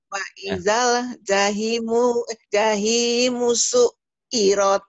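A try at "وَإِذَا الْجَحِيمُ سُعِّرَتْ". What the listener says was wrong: Janya tadi kok suka panjang. Jangan panjang di sini pendek. Wa'idah jahi. Tekannya di hi. Wa idzal jahimu su'irat. Iya, su'irat ya. Ingat su'irat ya. Su'irat.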